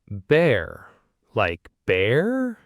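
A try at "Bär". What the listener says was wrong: Almost. Open your mouth just a little more. And keep it very short.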